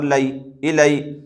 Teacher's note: جیسے حمزہ زیر ای، لام یا زبر لئی، یہاں پر یا لین ہوگا، اس لیے کہ یا ساکن سے پہلے زبر ہے۔ یا لین کو نرم آواز کے ساتھ جلد پڑھیں، معروف پڑھیں، مجہول آواز سے بچیں